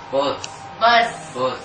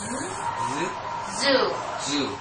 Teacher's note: Both the teeth should be touching each other, and then the tongue should be right in front, and it should vibrate.